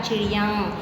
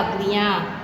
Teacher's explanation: यानी कि अनुनासिक हो जाते हैं, जो कि हमारी नाक से आवाज़ आती है